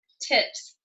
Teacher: Suffix S is unvoiced after an unvoiced sound. Tips. P is unvoiced.